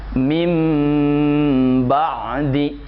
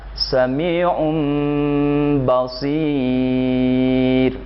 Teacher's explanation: Karena dalam segi makhraj ada titik kesamaan antara mim sama dengan ba, sehingga praktiknya dengan cara merapatkan dua bibir serta mendengung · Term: iqlab